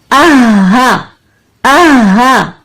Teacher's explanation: हा के मखरज के लिए हम जाएंगे अपने अक्सउल हलक में। आहा आहा, पहले हा को तसादुम किया आहा और फिर जबर के साथ अदा किया।